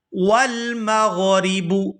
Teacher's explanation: یہاں را کو باریک ادا کریں گے کیونکہ را کے نیچے زیر ہے۔ را کے اوپر زبر ہو یا پھر پیش ہو تو را پورا ادا ہوتی ہے، اور اگر نیچے زیر ہو تو باریک ادا ہوتی ہے، تو یہاں پر را کو باریک ادا کریں گے۔